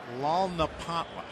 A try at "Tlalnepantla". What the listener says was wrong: You're close. The T is not silent. It's Tlalnepantla. Tlalnepantla. Tlalnepantla.